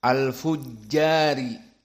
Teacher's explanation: ra di sini sepakat semua qurra menyebutkan dalam keadaan muraqqaqah karena kasrah